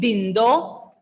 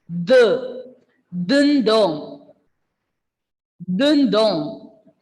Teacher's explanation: Ending letter N will be silent and the O sound will be nasal.